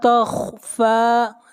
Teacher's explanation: خا کو موٹا پڑھیں گے، خا حروف مستعلیہ میں سے ہے، اور فا کو کھینچ کر پڑھیں گے ایک الف کے برابر، فا کے اوپر کھڑی زبر ہے۔ · لا کو کھینچ کر پڑھیں گے ایک الف کے برابر، یہاں پر الف مدہ ہے